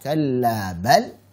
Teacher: Karena saktah, berhenti sejenak tanpa mengambil nafas dan kemudian melanjutkan bacaan.